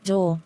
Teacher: articulated in the back part of the vocal tract with the tongue partly opened and the lips in a rounded position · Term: long o